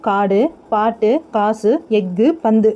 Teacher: வல்லின மேய்கள் ஏறிய உகரம் தன் ஒரு மாத்திரை அளவிலிருந்து அரை மாத்திரை அளவாக குறைந்து ஒலிக்கும் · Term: குற்றியலுகரம்